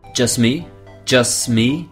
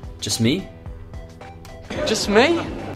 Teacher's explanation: the T at the end of just doesn't have that plosion